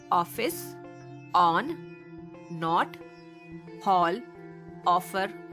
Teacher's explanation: यह ध्वनि आ तथा ओ के बीच की है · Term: अर्धचंद्राकार